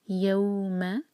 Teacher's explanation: یو مد لین soft پڑھیں گے، یو نہیں کہنا